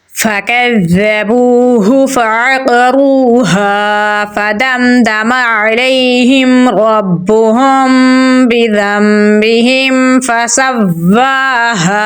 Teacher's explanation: ناک میں چھپا کر پڑھیں گے تو پڑھا جائے گا ربهم۔ نون ساکن کے بعد با ہے تو یہاں پر اقلاب ہوگا، نون کو میم میں تبدیل کر دیں گے ، میم ساکن کے بعد با ہے تو یہاں پر اخفاء · کے اوپر تشدید ہے، کھڑی زبر ہے تو لمبا پڑھیں گے، ہا کو گلے کے نچلے حصے سے نکالیں گے اور لمبا پڑھیں گے · تو یہاں پر اخفاء شفوی اور اقلاب دونوں ادا کریں گے، ہا کو میم کے ساتھ ملائیں گے، میم کی آواز کو ظاہر کر کے پڑھیں گے